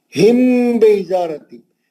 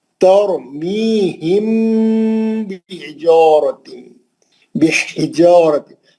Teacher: मीम साकिन का इख्फा शफी हर्फ बा या गुन्ना करेंगे मीम का